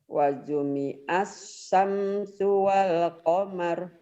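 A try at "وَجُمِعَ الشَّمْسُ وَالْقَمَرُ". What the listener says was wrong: Wa jumi'ash. Mau tangsin sama saya nih masih. Wa jumi'ash syamsu wal qamar. Hutang shin, ayo shinnya dibayar.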